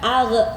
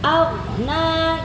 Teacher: huruf gha itu bukan dikolkolahkan, bukan dipantulkan, tapi bacanya sesuai makhrajnya saja.